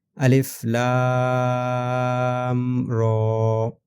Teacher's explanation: Next, الف لام رو۔ یہاں پر لام کو 3 الف کی مقدار اور رو کو 1 الف کی مقدار، اور رو کو موٹا پڑھیں گے